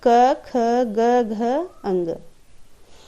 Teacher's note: क वर्ग को कंठ्य कहते हैं। कंठ इसीलिए कहते हैं दोस्तों क्योंकि इनका उच्चारण कंठ को स्पर्श करते हुए होता है।